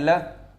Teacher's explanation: पार्श्विक में केवल एक व्यक्ति का नाम आता है, वो है ल, क्योंकि कहा जाता है इसके उच्चारण में जिह्वा पीछे की तरफ पलट जाती है और साइड साइड से वायु का प्रवाह होता है। ऐसी स्थिति में हम उसे पार्श्विक कहते हैं।